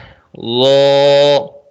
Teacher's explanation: ضو کا مخرج ہے زبان کا سرا اوپر کے دانتوں کے اندرونی کنارے سے